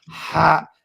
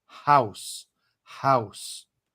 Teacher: You have a Ha. A Ha which comes from the back of your throat. Ha. It's like hard H.